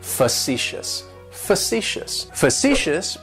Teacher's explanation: like you're just saying the letter C fuh si s and that first syllable has that schwa that sound · facetious has three syllables and the stresses on that second syllable it's like you're just saying the letter C fuh si s